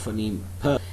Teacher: it is unvoiced, bilabial and plosive sound